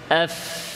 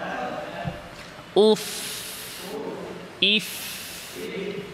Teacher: তাহলে ঠোঁটের বাতিন থেকে, বাতিন যে অংশটা ভেজা, যে অংশটা শুকনা ঠোঁটের এটা হচ্ছে যাহির, যেটা ভেজা ওটা হচ্ছে বাতিন। তো ঠোঁটের বাতিন থেকে, ভেজা অংশ থেকে, ভেজা অংশটাকে উপরে দাঁতে লাগিয়ে ফা হরফটি আদায় করতে হবে